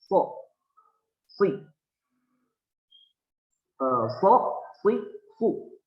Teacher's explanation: Ini keluar dari ujung lidah bertemu dengan ujung gigi taring dua yang bawah.